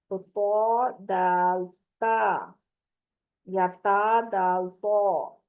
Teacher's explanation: ये तीनों हरूफ जुबान की नोक को ऊपर के सामने वाले दो दांतों की जड़ से लगाने से अदा होते हैं।